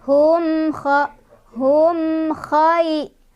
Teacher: Di sini ada izhar syafawi karena ada mim sukun bertemu dengan huruf izhar syafawi yaitu kha. Cara bacanya mimnya dibaca jelas ya.